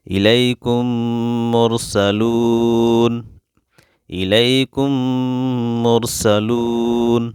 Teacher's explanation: یہاں دیکھیے میم ساکین ہے اور میم ساکین کے بعد میم ہے، تو یہاں پہ ہم میم کو ملائیں گے تو غنہ ہوگا · یہاں دیکھیے آیت ہے، رکیں گے تو یہاں پہ نون کے اوپر جزم مان کر پڑھیں گے